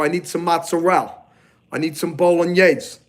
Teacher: Italian Americans leave off the e